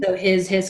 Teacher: the word his is spoken with a Z at the end even though it's spelled with an S